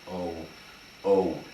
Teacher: If you say a, plain old a, which is called a kamatz katan, because it's not started with a patakh, you take a simple a sound and you add a W, a natural W sound, you're left with o. And indeed, that is the tradition among Ashkenazic Jews to pronounce a holam like an o.